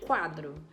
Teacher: na palavra quadro quadro eu escuto o barulho do u eu não falo cadro eu falo quadro então se eu estou